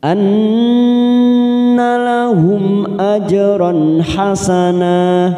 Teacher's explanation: mim sukun bertemu hamzah, kita baca jelas tanpa mendengung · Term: idhar safawi